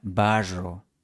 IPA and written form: 'ba.ʐo (barro)